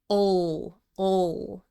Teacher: Try to pronounce the L in the final syllable with a dark ol sound. You should feel tension as you lift the back of the tongue, and you can round your lips a little bit.